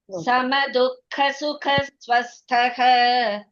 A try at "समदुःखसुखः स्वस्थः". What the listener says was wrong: துக்கக்கு அப்புறம் இஸ் போட வேண்டாம். சம துக்க சுக ஸ்வஸ்தஹ துக்க சுக துக்கஸ் போட வேண்டாம் சொன்னேன்.